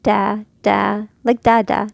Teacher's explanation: There's no raising of the tongue in the back.